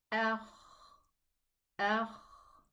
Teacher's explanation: it's a soft letter because the sound is running